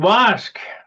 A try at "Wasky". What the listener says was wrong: E's not silent.